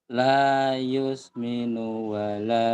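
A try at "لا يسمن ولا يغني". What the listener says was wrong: Pendek nunya. La yusminu wala. Nunya pendek. Pendek. La yusminu wala yughni.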